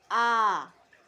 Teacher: Yang ketiga, vokal rendah atau bawah yang dibentuk apabila rahang bawah diundurkan lagi sejauh-jauhnya